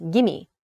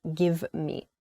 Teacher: So the contraction there, it decreases the distance between those two words. The v sound disappears.